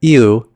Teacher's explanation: It's kind of like the English word u, but instead of the y sound, you still hear a hint of the e. Compare eu versus you.